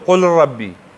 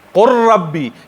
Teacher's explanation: مدغم شي او را به تلفظ شي. لام به ختم شي او قاف به ډایرکټ د را سره وصل شي